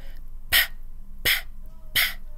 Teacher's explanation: Okay, our popping sound. Lips together. Pa, pa, pa. How our lips pop open.